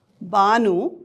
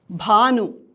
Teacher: ಒಂದು ಅಲ್ಪಪ್ರಾಣ ಮತ್ತೊಂದು ಮಹಾಪ್ರಾಣ ಈ ಒಂದು ಧ್ವನಿ ವ್ಯತ್ಯಾಸವೇ ಪದದ ಅರ್ಥವನ್ನು ಬದಲಾಯಿಸುತ್ತದೆ